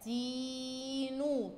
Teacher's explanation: لما هنيجي ننطقها في تين هتبقى تينو، طولنا في كسرة التاء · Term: المد بالياء